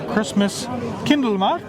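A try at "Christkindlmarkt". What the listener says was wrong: Chris Kindle, not Christmas Kindle. Yes.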